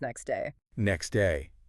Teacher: We write the T, we know it's there, but when we say it quickly, it often just becomes next day. Next day. Yeah, the T just vanishes. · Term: elision